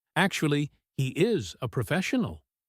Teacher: Stressing actually is a way of introducing the truth that contradicts appearances. It is a signal that says, forget what you see, forget what you thought.